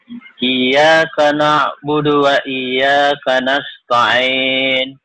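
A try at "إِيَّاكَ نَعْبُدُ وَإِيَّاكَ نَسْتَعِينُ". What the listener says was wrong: Masih digeret ya. Kalau masih digeret, iya karena na'budu wa iya. Kan ada tasdid di situ.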